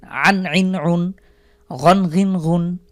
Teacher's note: শেষে নুন সাকিন অথবা দন্ত যোগ করে পড়বো আনইন উন আইন আইন হলো কণ্ঠবর্ণ আমরা জানি কণ্ঠের বা হলকের মাঝখান থেকে উচ্চারিত হয়